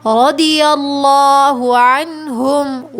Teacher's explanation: رضی اللہ عنہم، دیکھیے را کے اوپر زبر ہے نا تو ہم اس کو موٹا پڑھیں گے، اور لفظ اللہ سے پہلے بھی زبر آ رہا ہے تو ہم لفظ اللہ کو موٹا پڑھیں گے